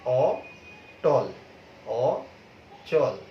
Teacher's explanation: অ কিন্তু অ এর মতো উচ্চারিত হচ্ছে, যার জন্য এটাকে আমরা বলছি অধ্বনির স্বাভাবিক উচ্চারণ অর্থাৎ বিবৃত উচ্চারণ।